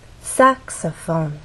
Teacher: in the case of saxophone there are also three syllables but the stress syllable is the first one which means we have two more syllables to make our voice fall down and actually can fall down even further the more unstressed syllables